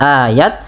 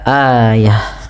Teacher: huruf ta-nya kita ganti, kita rubah menjadi huruf ha yang dimatikan.